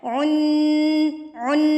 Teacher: उन ये जो अमिंग साउंड है उन उन नून के साथ जो है जुबान ऊपर टच होगी और मजबूती के साथ होगी। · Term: गुना